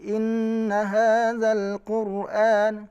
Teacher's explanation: Getarannya tidak boleh terlalu banyak, lebih dari 2 kali. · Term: takrir